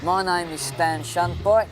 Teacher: This is one of the phonetic features of the Cockney accent. The diphthong A is pronounced more like I because it's deeper. So he says name instead of name.